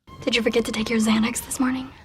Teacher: The stressed words in this sentence are Xanax and morning. These words are longer and louder, more emphasized than the other words, which are rushed through quickly.